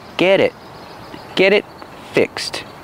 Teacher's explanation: get change to a fast D get it get it and the T and it is a stop T because it's before a consonant